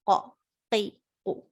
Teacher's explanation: The back of the tongue touching the fleshy upper palate and moving away gives you the sound of qaf. So the point of articulation of qaf is back of the tongue with the fleshy palate.